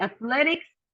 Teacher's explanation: only athletics, we have the second syllable stress